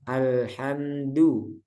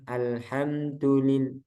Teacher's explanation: dalnya ee jangan sampai keluar udara